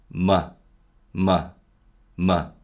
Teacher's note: nasalized as the english m sound and this just means that not all the air passes through the nose and some actually pass through the mouth · a voiced nasal sound meaning that air passes through the nose rather than through the mouth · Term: denasalization